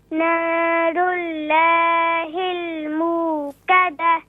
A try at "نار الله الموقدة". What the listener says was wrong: اس کو اللہ کے اعلام کو مزید موٹا کیجئے، تھوڑا سا اور موٹا کیجئے.